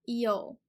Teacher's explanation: it's E, again, that high front and wide sound, E, O, where the lips are round, really close together, really quickly